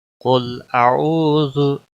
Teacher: कुल का क़ाफ मोटा पढ़ेंगे, लाम को हिलाना नहीं। आऊ वाव मद्दा है, 1 अलिफ के बराबर खींचना है